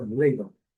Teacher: A primeira sílaba é a sílaba forte. Então, ladle. E a segunda sílaba bem fraca.